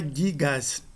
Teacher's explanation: Ao se acrescentar o S no nominativo singular, a dental T cai, a nasal cai e, para compensar a queda da nasal, alonga-se o A.